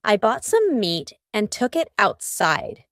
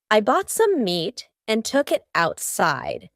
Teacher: Almost each of these words that end in T have a stopped T.